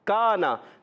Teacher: کاف کا مخرج زبان کی جڑ اور تالو کا سخت حصہ